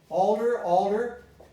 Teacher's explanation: Alter, altar. Both become alder. And the T became a D. Why? Between two voice sounds.